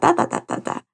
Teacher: they also start to babble with inflection so going up and down with their voice